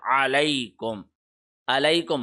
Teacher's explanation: عین حلق کے درمیان سے، علیکم، علیکم حمزہ کی طرح نہ پڑھیں